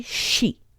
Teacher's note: Japanese people don't say C they say she so it's a soft sh sound instead of C